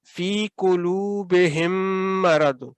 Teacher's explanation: اگر تو میم ساکن کے بعد آپ میم مشدد کو دیکھیں تو آپ نے میم کو اس کے ساتھ مدغم اگلے میم کے ساتھ کرتے ہوئے ملا کر پڑھتے ہوئے تو آپ نے 2 سیکنڈ کا غنہ کر کے اس کو ادا کرنا ہے. جیسے یہ دیکھیں فی قلوبہم مرض، یہ جو آپ نے ہم کرنا ہے نا، یہ اس میم کو اس میم کے ساتھ ملا کر ادا کر رہے ہیں، دونوں میم بالکل مرج ہو جائیں گے ایک دوسرے کے ساتھ.